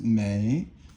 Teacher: mei, third tone, and it means every.